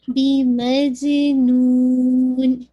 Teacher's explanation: نون کی دمہ کو واضح کرتے ہوئے لاسٹ میں آپ نے نیزل ساؤنڈ کو ایڈ کرنا ہے